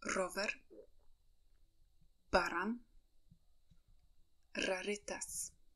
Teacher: When you say R, the tip of your tongue should vibrate.